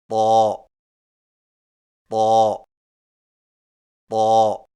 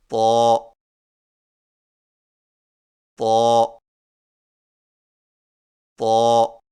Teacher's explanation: زبان کی نوک کو سامنے والے اوپر کے دو دانتوں کی جڑ سے لگا کر اور زبان کے پچھلے حصے کو تالو کی طرف بلند کرتے ہوئے موٹی آواز میں پڑھیں، یعنی طا طا طا۔